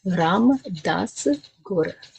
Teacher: Again, the R on that gur, it hits the hard palate.